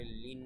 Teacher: নুনের উপরে তাসদিদ তাই এখানে ওয়াজিব গুন্না লিন, নুনের উপরে খাড়া জবর এক আলিফ টান।